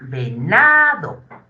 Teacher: La sílaba tónica va a ser na.